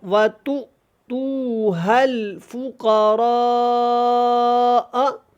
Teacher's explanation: حمزہ کو پڑھنا ہے، حمزہ پڑھا جا رہا ہے اور جھٹکا کے ساتھ اس کو پڑھ رہے ہیں ہم